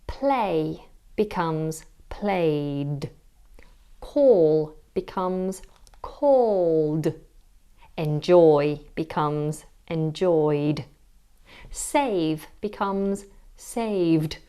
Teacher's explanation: That is the /d/ sound, which is used for all verbs ending with a voiced sound, except d.